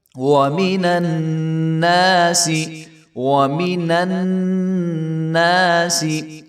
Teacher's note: تو نون کو نون کے ساتھ ملائیں گے اور یہاں پہ غنہ ہو رہا ہے تو غنہ کر کے پڑھیں گے